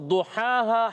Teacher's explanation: تو او ضحاہا، ہا پر کھڑا زبر، ہا ادا ہوتا ہے حلق کے درمیان والے حصے سے